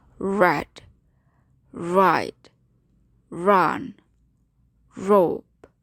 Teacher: Retroflex means that the tip of the tongue, therefore an apical sound, is curled up and back towards the real part of the alveolar ridge. · The post-alveolar area is right behind the alveolar ridge on the border of the hard palate, but the spatial position of the tongue gives it its retroflex characteristic. The tip of the tongue does not touch the upper articulator. There is only approximation. The retroflex English consonants are as follows: r, r, as in red, ride, run, rope.